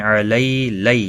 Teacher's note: علی لئی، یہاں پر بھی یا لین ہے، نرمی کے ساتھ تھوڑا آدھے الف کی برابر کھینچ کر پڑھیں گے۔ کا کو کھینچنا نہیں۔